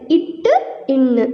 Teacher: அடுத்து இட்டு, இன்னு ஆகிய 2 மெய்களும் நாவின் நுனி அன்னத்தின் நுனியில் பொருந்துவதால் பிறக்கின்றன